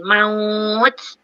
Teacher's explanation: Ta tu ada hams bila kita matikan. So ada ada angin.